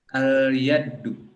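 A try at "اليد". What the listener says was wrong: Enggak pakai tasdid ya, al-yadu.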